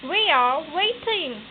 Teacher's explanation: The pitch registers a fall from about mid to low and then from mid to high. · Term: falling rising tone